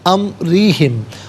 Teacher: را کے نیچے زیر ہے، را کو باریک کر کے پڑھا جائے گا